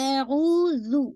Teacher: واو سکون، او پورا آپ نے 2 کاؤنٹ پڑھنا ہے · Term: واو مدیہ